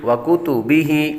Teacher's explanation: کاف باریک اور ہا کے نیچے کھڑا زیر